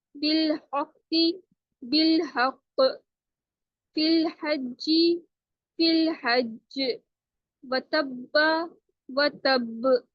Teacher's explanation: اگر آخر میں قلقلہ والے حروف آئیں جیسے قاف، طا، با، جیم، دال ہو اور ان پر تشدید ہو تو سختی کے ساتھ قلقلہ کرتے ہوئے رکیے